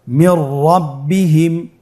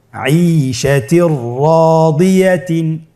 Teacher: একই নিয়মে নুন সাকিন তানবিনের পরে এই 2টি হরফ আসলে নুন সাকিন অথবা তানবিনকে পরবর্তী হরফের সাথে মিলিয়ে গুন্না ছাড়া পড়তে হবে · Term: ইদগামে বিলা গুন্না